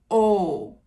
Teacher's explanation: O is a closed mid back rounded vowel it means that it's slightly lower than o and it's back